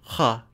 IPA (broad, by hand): χ